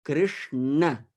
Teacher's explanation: my tongue is there it's up and i say krishna so my tongue bends and then i press it to that area above my upper teeth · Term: retroflex sounds